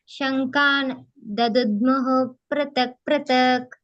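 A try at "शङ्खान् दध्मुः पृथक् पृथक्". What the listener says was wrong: ಅಲ್ಲಿ ದದ್ಮುಹು ಅನ್ನಂಗಿಲ್ಲ, ಅಲ್ಲಿ ಕೂಡ ಹಾಗೇನೆ ಸ್ಲೈಟ್ ಆಗಿ ಬರುತ್ತೆ. ಶಂಖಾನ್ ದದ್ಮುಃ ಪೃಥಕ್ ಪೃಥಕ್. ಅಲ್ಲಿನೂ ಕೂಡ ಹ ಹೇಳ್ಬೇಡಿ.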